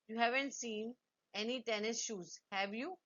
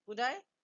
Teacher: use a rising intonation in the tag. It is a genuine question.